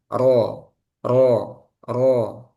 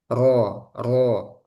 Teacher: Kalau ro dia mengerucut ke tengah. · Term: inhiraf